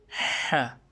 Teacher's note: یا ح جو ہے یہ حلق سے نکلتا ہے. یہ جب ہم سردی میں جب ہاتھوں کو گرم کرنے کے لیے جو آواز نکالتے ہیں اسی جگہ سے یہ ح کا مخرج نکلتا ہے، اس طرح کے اب یہ دیکھیں، یہ وہی ہے.